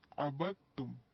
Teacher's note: دال کی آواز بالکل بھی نہیں آئے گی، وہ ختم ہو جائے گی